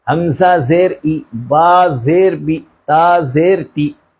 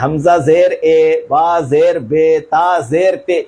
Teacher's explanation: زیر کو معروف پڑھیں، مجہول آواز سے بچیں۔ زیر کی آواز نیچے کو جاتی ہے